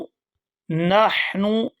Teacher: یہاں پر حا ہے، حا کو حلق سے اچھی طرح سے ادا کریں گے